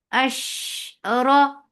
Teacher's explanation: It has Tafashi, it has Rakhawa, but it does not touch your lips. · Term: sheen